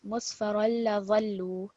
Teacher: because the lam's got a shadda on it, we're going to put extra stress on it